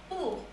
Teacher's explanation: Now this is a very short sound and it's not too rounded. It's not quite like ooh.